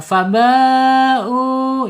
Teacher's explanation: Mad wajib muttasil, panjangnya 4 sampai 5 harokat. Ya, awas pakai hamzah ya di bawah tenggorokan, nggak boleh di tengah-tengah.